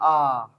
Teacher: अब है विवर्त स्वर। विवर्त स्वर का मतलब है कि इसमें पूरा खुल जाता है, जो मुंह है वो पूरा खुल जाता है।